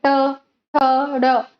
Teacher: उदाहरण जैसे दी गई है ट, ठ, ड, इन सारी अक्षरों का उच्चारण करने के समय हमारा जिह्वा का स्थिति और अग्रभाग उल्टी होकर मूर्धा को स्पर्श करके ही संपादन करती है, ध्वनियों का उच्चारण संपादन करती है, उसे हम क्या कहते हैं, मूर्धन्य व्यंजन।